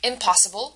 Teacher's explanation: impossible where the second syllable is stressed